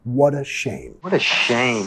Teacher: Vinculando con la R suave de español, what a. Al sonido schwa, what a shame.